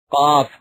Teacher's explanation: زبان کی جڑ اور تالو کے نرم حصے سے ادا ہوتا ہے